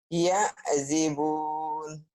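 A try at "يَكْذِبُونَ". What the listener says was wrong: Yak bukan ya ya, Bu. Yak, yak, yak, kap, yak. Yakdzibun yang ini.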